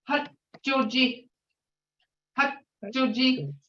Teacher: You don't hear that D in there, but your tongue is on top of your palate behind your teeth.